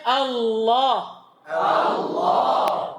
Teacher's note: A ditipiskan setelahnya ditebalkan karena huruf tebal.